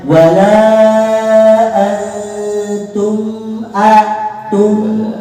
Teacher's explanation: Mim makhrajnya bibir, sifatnya guna. Jadi bacanya wala antum ada gunanya dikit, Pak. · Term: izar safawi